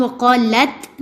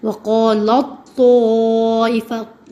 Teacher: ہم تا بالکل سرے سے نہیں پڑھتے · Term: ادغام تام